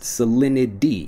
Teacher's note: the conversation next salinity salinity when I'm pronouncing it fast salinity even though again we have that T sound salinity becomes solidity when we're pronouncing it quickly